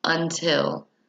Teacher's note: The l sound is produced by the tongue behind the teeth. This is the alveolar sound.